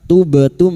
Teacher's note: Tubtum mim sukun bertemu fa idhar safawi mim sukun dibaca jelas tanpa mendengung